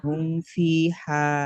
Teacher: মিমকে বিনা গুণনায় জাহির করে পড়তে হবে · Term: ইজহারে সাফাবি